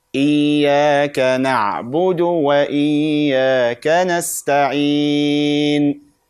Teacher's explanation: The dal is from the taraf al-lisan, from the tip of the tongue or the front part of the tongue.